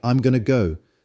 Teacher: the going to shortens to Gunna making the sentence faster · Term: connected speech